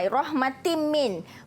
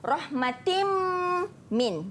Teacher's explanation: Hukum nun mati dan tanwin berjumpa dengan mim, dia idgham ma'al gunnah, dibaca dengan dengung.